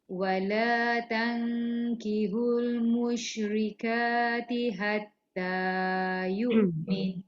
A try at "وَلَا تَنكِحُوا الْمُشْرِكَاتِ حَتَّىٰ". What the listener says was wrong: dia ada beza tau huruf ha dengan ha. Dekat ayat ni ada dua-dua ha. Wala tankihul musyrikati hatta. Kalau kita sebut kihul hatta dia jadi ha tu nanti. Ha tu tekan sikit.